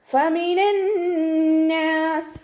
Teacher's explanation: ഫമിനന്നാസ്, ഫ ലൈറ്റാക്കിയിട്ട് ഉച്ചരിക്കുക. മേലെ മുൻപല്ലിൻ്റെ അറ്റം താഴെ ചുണ്ടിൻ്റെ ഉൾവശത്ത് നനഞ്ഞ ഭാഗത്ത് വെക്കുക. നൂനിന് ശ്രദ്ധ വന്നിട്ടുണ്ട്, അക്ഷ്മലൗനനാണ്, നന്നായിട്ട് മണിക്കുക.